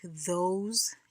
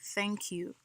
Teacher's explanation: The voice would be in words like those, and then the voiceless in a word like thank you.